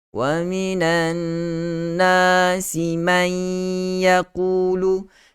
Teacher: Gunnah. Yang sifat gunnah yang paling sempurna biar lebih dengungnya.